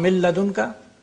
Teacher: If it is followed by lam, it becomes lam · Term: complete assimilation